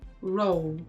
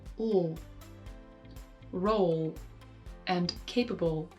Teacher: the lip corners come forward to make a U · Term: lip corner rounding